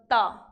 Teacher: त का उच्चारण स्थान दंत होता है